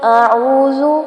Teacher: اعوذ زال کو نرمی سے پڑھیں گے اور لمبا نہیں کرنا